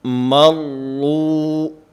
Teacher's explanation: مرو جو پہلا کلمہ ہے، اب اس میں را مشدد ہے، ایک تو اس میں ٹھہراؤ، مضبوطی اور جماؤ ہونا چاہیے، اور اس کے ساتھ ساتھ اس را کو پر اور موٹا پڑھنا ہے، اس لیے کہ کل کے سبق میں یہ بات میں عرض کر چکا ہوں کہ را مشدد ایک حرف کے حکم میں ہوتی ہے، اور موٹا اور باریک ہونے میں اپنی حرکت کے تابع ہوتی ہے۔